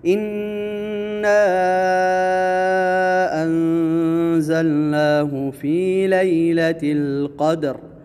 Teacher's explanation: اِنَّا یہاں پر جو مد ہے، مد جائز منفصل ہے، اس کو لمبا کرنا ہے، اور انزلنا نون پہ اخفا ہوگا، یہاں پر غنہ کریں گے